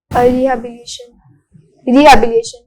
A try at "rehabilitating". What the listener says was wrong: Rehabilitation is wrong. So you use twice rehabilitation and rehabilitating. So it is rehabilitating.